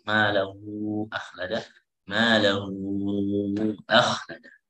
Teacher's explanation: Maka di sini dibaca dengan mad jaiz ya, dianggap itu mad jaiz, jadi boleh 4 harakat atau 6 harakat